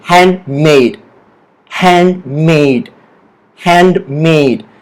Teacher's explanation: The stress is on the word made.